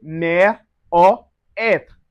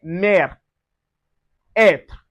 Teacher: And the E with the accent facing backward or the E with the accent like a cap is called accent grave and accent circonflexe create a more open sound like in mer.